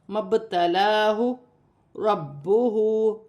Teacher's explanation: اور مبتلاہ، یہاں پہ با ساکن ہے، یہاں پر قلقلہ پیدا ہوگا، مبتلاہ ربہ، با مشدد ہے، اسے بھی جماؤ اور سختی کے ساتھ پڑھا جائے گا، اور ہا پر الٹی پیش ہے، اسے بھی ایک الف کی مقدار کھینچ کر پڑھا جائے گا